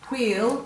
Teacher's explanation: if you say wheel, you can feel the air after the W and you know that there's an H there.